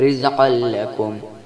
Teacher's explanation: قاف حروف مستعلیہ ہے جس لیے قاف کو موٹا پڑھیں گے